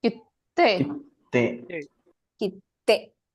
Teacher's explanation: the emphasis is on the sound after the syllabic stop